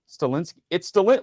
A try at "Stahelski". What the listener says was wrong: There's no N. Stahelski, not Stalensky.